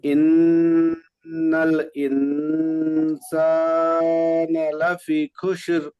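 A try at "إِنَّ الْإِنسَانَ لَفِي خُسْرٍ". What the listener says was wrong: হুম, লাফি একটু টান দিবেন।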